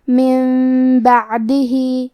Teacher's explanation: کلمت بعدہ میں عین ساکن ہے تو ہمیں عین کو ظاہر کرنا ہے. آخر میں ہا کے نیچے کھڑی زیر ہے. · قلب کا معنی ہے بدل دینا، تو ہم نون ساکن کو میم میں بدل کے اور غنہ کے ساتھ یہ حکم کو ادا کریں گے